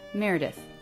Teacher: this does end in an unvoiced TH sound. Tongue tip does come through the teeth for that.